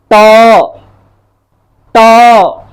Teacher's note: देखिए, आप उच्चारण कीजिए ट का, ट, ट लगेगा ये कि ये जो जिह्वा है वह जिह्वा मुख के ऊपरी हिस्से में पीछे की ओर, मुख के ऊपर पीछे वाले हिस्से को स्पर्श करती है। जहां तालु था ना, उस तालु से थोड़ा और पीछे कंठ की ओर उच्चारण कर रही है ये जिह्वा। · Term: मूर्धा